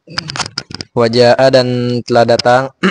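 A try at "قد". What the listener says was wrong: Qad itu nggak ada wawunya.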